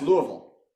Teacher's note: You don't pronounce the S at all, right?